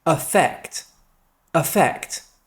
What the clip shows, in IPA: əˈfekt